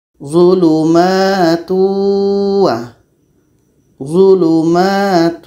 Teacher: tapi proses masuk dengungnya ini kepada wa itu idgam naqis karena dengung yang ada pada tanwin ini terbawa oleh wau kalau seandainya tanwin ini tidak ada maka tidak akan ada dengung · ini hukumnya adalah idgham bhunah tapi secara proses bacanya ini dengung yang ada pada tanwin ini terbawa masuk kepada wa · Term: Idgham naqis